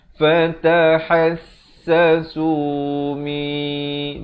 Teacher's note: idgham bi gunnah, masuk beserta dengung kadar panjang dua harakat · ha pedas di pertengahan kerongkong